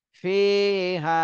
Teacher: ফিতে এক আলিফ টান দিতে হবে, হাতেও এক আলিফ টান দিতে হবে, দুইটাই মদের হরফ।